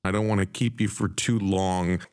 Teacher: Want and to are reduced to wanna.